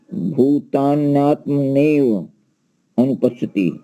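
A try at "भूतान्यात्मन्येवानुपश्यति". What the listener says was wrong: आत्म मन्ने, यहाँ पर मन्ने दो ना है, एक आधा है। वानुपश्यति, वानुपश्यति।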